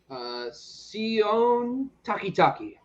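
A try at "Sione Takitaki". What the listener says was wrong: No, you got the emphasis on the O. It's Sione.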